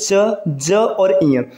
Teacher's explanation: जो पहला तीसरा और पांचवा अक्षर होता है इसे अल्प प्राण कहा जाता है इसके उच्चारण में मुख से कम वायु निकलता है